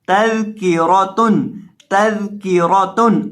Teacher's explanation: रौ के ऊपर जबर हो या रौ के ऊपर पेश हो तो हमेशा हमने रौ को मोटा करके पढ़ना होता है। अब यहाँ रौ के ऊपर जबर है तो रौ को पढ़ते वक्त हम इसको मोटा करके पढ़ेंगे।